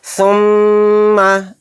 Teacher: मीम के ऊपर तशदीद आ गई, यहाँ पे गुन्ना होगा, नाक में थोड़ी देर आवाज़ को भिन भिनाएंगे